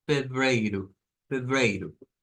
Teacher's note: termina en o y suena con u